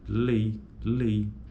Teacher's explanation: central é na primeira vogal logo é um ditongo decrescente então a palavra lei por ocorrer a proeminência acentual na primeira vogal ela é decrescente · Veja que a proeminência acentual ocorre na vogal E. Lei, lei. O I meio que dá uma sumida.